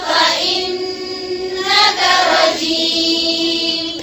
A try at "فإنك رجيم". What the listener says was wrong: फिर से पढ़े खास साकिन पर कलकला नहीं करें